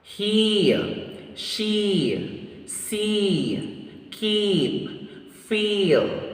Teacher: of this vowel sound is tense the thumb height is high the tongue advancement of this vowel sound is front the lip shape is unrounded